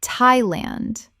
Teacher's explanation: The th makes a simple t sound, not the th sound of the or thought.